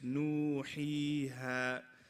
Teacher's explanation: A natural mad is, it's only 2 counts long.